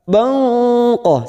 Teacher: fathah tanwin pada huruf ba bertemu qof ikhfa Hakiki kita samarkan bunyi tanwin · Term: ikfa hakiki